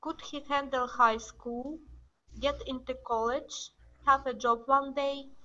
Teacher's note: So you want your voice to go up.